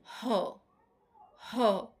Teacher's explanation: উচ্চারণের সময়ে ধ্বনিদ্বার থেকে বায়ু কন্ঠনালী হয়ে সরাসরি বের হয়ে আসে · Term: কন্ঠনালীয় ব্যঞ্জন, কণ্ঠনালীয় ব্যঞ্জন